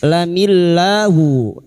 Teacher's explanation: lam jalalah yang didahului kasroh dibaca tarkik atau tipis. Lamillahu, la kita panjangkan 2 harokat.